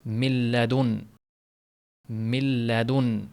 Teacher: Sukunni nun lam harf yo'liqyapti. Nun butunlik tushib ketadida. O'zidan keyin kelap turgan harf tashdid bilan o'qiladi. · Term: G'unnasiz idg'om